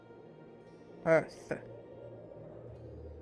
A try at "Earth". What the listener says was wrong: You don't have to pronounce the sound so much. It's just Earth. Kind of like hearth.